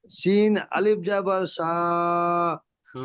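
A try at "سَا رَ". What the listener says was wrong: র টান হয়ে যাচ্ছে, র টান হয়ে যাচ্ছে, র তো টান নেই, র তো হারাকাত।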